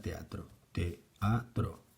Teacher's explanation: dos vocales contiguas que forman parte de sílabas distintas. Vamos a tener hiato cuando nos encontramos con dos vocales abiertas juntas, como por ejemplo en la palabra teatro, teatro.